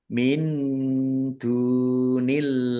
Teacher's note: nun sukun bertemu dengan huruf dal, bacaan ikhfa, dibaca samar-samar. Dal rumah wawu sukun mat tobi'i, panjang 2 harokat. · Dal dumah wawu sukun mad thobi'i panjang dua harakat.